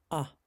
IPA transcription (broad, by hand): ʌ